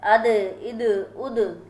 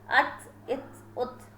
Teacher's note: زبان کی نوک اوپر کے سامنے والے 2 دانتوں کی جڑ سے لگے گا تو دال و تا ادا ہوگی